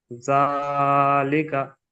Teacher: খাড়া জাবার আলিফ মাদ্দার সমতুল্য, সুতরাং আলিফ মাদ্দার মতো এক আলিফ পরিমাণ টান দিয়ে পড়তে হবে। আবার বলেন, জালের উপরে খাড়া জাবার এসেছে, খাড়া জাবার আলিফ মাদ্দার সমতুল্য, সুতরাং আলিফ মাদ্দার মতো এক আলিফ পরিমাণ টান দিয়ে পড়তে হয়।